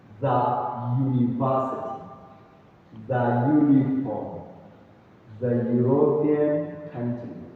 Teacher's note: So this one is not, even though it begins with U, which is a vowel letter, but the pronunciation is not the university, is the or the university. Even though it begins with U, but that U changes to a ya sound.